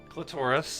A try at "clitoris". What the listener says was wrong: You say that weird, right? It sounds like you're saying Taurus like the Pokemon. Clitoris.